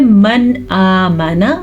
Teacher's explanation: जल्दी से पढ़ना है मन आमना बग़ैर गुन्ने के